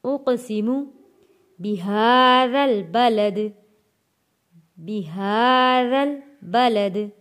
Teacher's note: ہا کے اوپر کھڑی زبر ہے، 1 الف کے برابر کھینچ کر پڑھیں گے